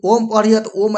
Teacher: ओ को बहुत ज्यादा बहुत ज्यादा समय तक बोलना पड़ता है